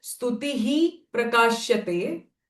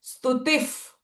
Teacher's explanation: Whenever it is followed by pa or pra, the visarga sound changes to f. So I am not going to say stutihi prakashyate, but what I am going to say, stutif, f sound, stutif prakashyate.